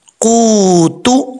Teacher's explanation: वाव साकिन से पहले पेश है तो यहां पर वाव मद्दा है, एक अलिफ की मिकदार, इसको लंबा करेंगे। अब इसको कूतो नहीं पढ़ना, तापिस्तु कूतु।